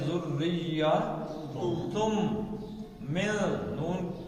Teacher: اب یہ تن آ گیا ہے تو ایسے ہے تن، اور اس کے آگے آ گیا میم. تو نون ساکن کے بعد میم آئے تو ادغام کا یرملون کا قاعدہ آتا ہے، تو نون نہیں پڑھا جائے گا، میم پڑھا جائے گا. یہ نون نہیں، تن نہیں آئے گا، بلکہ ذریہ تم من.